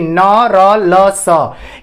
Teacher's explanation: इनको आप जब बोलोगे तो आपकी जो जीभ होती है ऊपर वाले मसूड़े को क्या करती है, स्पर्श करती है